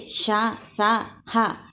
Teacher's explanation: గాలిని బయటికి ఊదుతూ పలికే అక్షరాలని ఊష్మాలు అంటారు